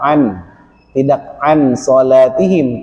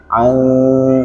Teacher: dia harus ikhfa, bunyinya samar-samar, tidak an salatihim, tapi an.